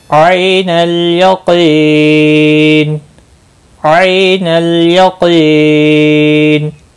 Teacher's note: क़ाफ मुस्तालिया है, पूर्व पढ़ा जाएगा।